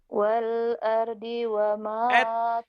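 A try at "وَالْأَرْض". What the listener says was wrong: jangan buru-buru huruf matinya. Jangan. Artikulasinya jangan cepat-cepat. Jangan buru-buru.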